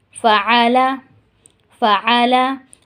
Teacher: اب یہاں پہ عین تھوڑا سا آپ کو حلق سے نکالنا ہوگا، ٹھیک ہے۔ فعلا، اس کو فعلا علا کر کے نہیں پڑھیں گے، آ نہیں پڑھنا ہے، اس کو آ ہی پڑھنا ہے۔